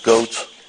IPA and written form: gəut (goat)